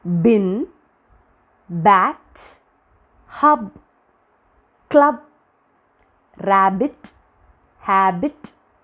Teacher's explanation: So P and B is our first combination, our first combo. So B, while producing B sound, B, you can feel the vibration. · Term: voiced consonant